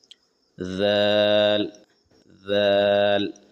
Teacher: दाल दाल इसको कैसे अदा करेंगे? जबान की नोक थोड़ी सी ऊपर के सामने के दांतों से लगाते हुए दाल अदा करेंगे। ऊपर के दांतों जबान की नोक को ऊपर के दांतों से लगाएंगे।